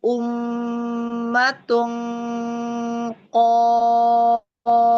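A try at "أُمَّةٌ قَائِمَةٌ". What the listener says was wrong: tanwin ketemu ya idgham bigunahnya jangan berdenging Masuk aja ke hidung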